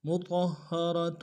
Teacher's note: طا کو موٹا ادا کرتے ہوئے ہا کے سامنے آئیں گے، ہا کے اوپر تشدید زور دیں گے، را کو موٹا ادا کریں گے تاکہ تنوین کو آگے واو کے سامنے آئیں گے۔